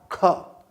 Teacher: क पर अगर मैं प्रश्वास का झोंका लगाऊंगा तो बनेगा ख, महाप्राण ध्वनि बनेगी